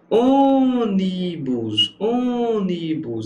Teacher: A sílaba tônica aqui é a antepenúltima. Logo é uma proparoxítona.